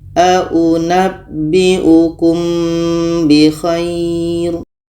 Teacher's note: Ikhfa Syafawi kita dengungkan ketika kita sebut huruf mim kita sudah merasakan huruf ba